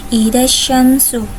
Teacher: alif lam bertemu dengan salah satu huruf Syamsiyah yaitu syin maka dinamakan alif lam syamsiyah dan Alif lamnya tidak dibaca